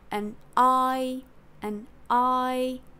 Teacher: in terms of intonation um we jump up on I and we hold it a high note